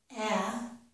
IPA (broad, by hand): æ